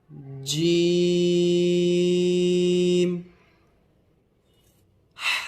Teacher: جیم کو کم سے کم 5 الف کی مقدار کھینچ کر پڑھیں گے